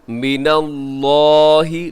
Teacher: لفظ اللہ کو موٹا پڑھیے گا کیونکہ اس سے پہلے نون کے اوپر زبر ہے۔